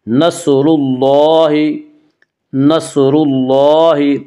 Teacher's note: لام کے اوپر کھڑا زبر ہے، کھڑا زبر کو 1 الف کے برابر کھینچ کر پڑھیں گے